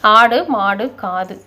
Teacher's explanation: குற்றியல் உகரத்துக்கு அரை மாத்திரை தான். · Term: குற்றியல் உகரம்